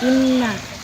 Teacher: Dalam kata inna terdapat hukum bacaan guna karena nun tasdid dibaca dengan dengung ditahan 2 harokat